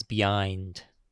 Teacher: I listened to the vowels shift from the general Londonish blend to something rounder and wetter.